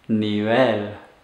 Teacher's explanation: put the stress or intonation on the last syllable so that you're stressing that L at the end